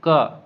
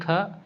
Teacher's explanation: तो क वर्ण क वर्ग में आता है क देखो पहला है यह अघोष अल्पप्राण है वही ख अघोष महाप्राण है